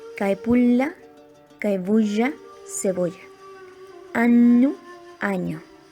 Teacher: De esta influencia resultaron cambios fonéticos en la lengua. L y N geminadas se palatalizaron